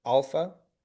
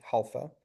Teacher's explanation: And if it were with a rough breathing, we would say halpha.